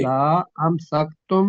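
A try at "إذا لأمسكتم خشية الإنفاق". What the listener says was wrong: نہیں، لا لمبا امسکتم.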